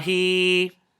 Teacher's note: So the Ya Sagheera extends the kasra sound to equivalent to 2.